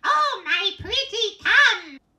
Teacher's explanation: It is quite a bright sound. It's a narrowing at the back of the throat, just above in the area epiglottic sphincter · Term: twang